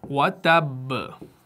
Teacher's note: तो उस सूरत में जो कलकला वहां पर आप करेंगे ना, वो आप करेंगे कलकला अकबर, यानी जो स्ट्रॉन्गेस्ट कलकला है, सबसे बड़ा कलकला